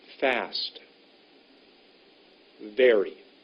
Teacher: you put your top teeth on your bottom lip